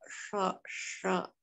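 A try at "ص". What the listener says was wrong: Ya, itu lidahnya kurang naik, lidah pangkal lidahnya aja. Jadi dia yang sho.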